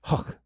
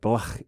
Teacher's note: The technical term for this sound is a voiceless velar fricative, and it's that kind of hocking up sound made at the back of the throat